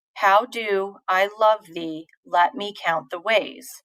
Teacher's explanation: the first of each foot is unstressed and the second is stressed